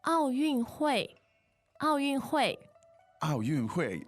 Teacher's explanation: that sounds very like 3 fourth tones